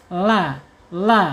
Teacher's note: Ujungnya, tepi lidahnya ya, tepi ujung lidahnya menyentuh langit-langit depan ya, mendekati pangkal gigi seri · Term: lam